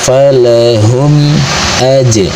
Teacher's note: Selanjutnya di sini terdapat hukum mim sukun yaitu izhar syafawi sebab ada mim sukun yang menghadapi huruf hijaiyah selain mim dan ba, maka cara bacanya mim sukunnya dibaca dengan jelas, terdengar jelas bunyi m